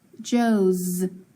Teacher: Is that S making a S or a Z sound? It's sounding like a Z, so I'm going to mark it as that too.